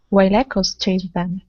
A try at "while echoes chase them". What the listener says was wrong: Good, good, yes.